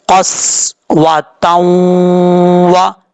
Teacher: تا کو واو سے کنیکٹ کریں گے، ادغام یرملون ہوگا، ایک الف کی مقدار غنہ بھی کیا جائے گا